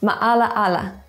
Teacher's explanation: For example, where there are 2 vowels, one after another, they are pronounced distinctly, like in maala-ala. Did you hear the separation between the 2 a? That was the glottal stop. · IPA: [maʔalaʔala]